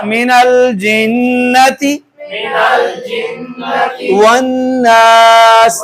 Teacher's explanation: تشدید ہے، نون مشدد میم مشدد پہ ہر حال پہ، دیکھیے گا من الجنت والناس، ٹھیک ہے جی، ادھر بھی غنہ ہم نے کیا، نون مشدد پہ غنہ کیا اور ساتھ الف مدہ